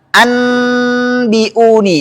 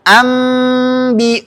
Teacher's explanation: maka bunyi nun di sini dirubah menjadi mim. Enggak boleh dibaca anbiuni. · nun mati atau tanwin diubah menjadi mim ketika bertemu huruf ba tanpa idgam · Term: iqlab